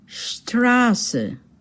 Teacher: That letter which looks like a B, it's not a B. You don't say Strabe, but rather it represents two S's. Two S's. And the vowel before that is pronounced long.